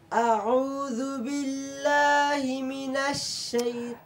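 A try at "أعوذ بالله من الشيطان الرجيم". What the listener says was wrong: আউযু বিল্লাহি মিনাশ, এটা কি এক শব্দ না দুই শব্দ? এক শব্দ বোঝা যায় না, শব্দটা আলাদা হবে। বিল্লাহি মিনাশ আরেক শব্দ, বলো। আউযু বিল্লাহি মিনাশ শাইতান, মনে যেন এক শব্দ, এখানে এক শব্দ না দুই শব্দ? হ্যাঁ, বিল্লাহি মিনাশ আরেক শব্দ, সবাই খেয়াল করুন।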